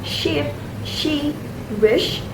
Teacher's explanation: This sound is a voiceless postal verar fricative. That means the air flows through a narrow space made by the tongue and the roof of the of the mouth producing a hissing sh sound. but without focal f vibration. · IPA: /ʃ/